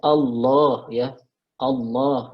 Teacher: Allah ya, vokalnya dibulatkan. Ya. Jadi, dibaca tafkhim, dibaca tebal.